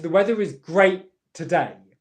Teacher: You go into the position of the T, you pause airflow, but because the next sound is also a T in connected speech, you only release it at the beginning of the next word.